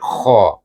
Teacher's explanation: kemudian yang hujung bunyinya k macam kita nak berkahak